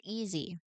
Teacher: You have the z right in the middle, and you can feel how the vibration connects the two parts of the word.